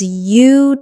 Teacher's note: 3 syllables. The stress is on the first syllable. Utilize. Make sure that first syllable is strong.